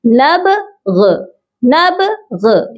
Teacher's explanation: ما كنا نبغ، یعنی کہ غائن کو آپ نے تھوڑا سا پرومیننٹ کرنا ہے۔ آپ یہ سمجھے کہ با تک پڑھا ہے اور غائن کو تھوڑا سا آپ نے اس کے مخرج کو ٹچ کرنا ہے۔